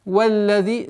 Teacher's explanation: С вау уходим на удвоенный лям. Валлази. Удлинение в размере двух огласовок касры.